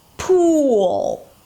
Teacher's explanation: The lips push forward, right? And the tongue pulls up. There's a lot of tension there in the tongue.